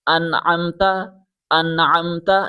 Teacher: نون کی آواز کو بغیر غننے کے صاف اور واضح پڑھا جاتا ہے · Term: نون ساکن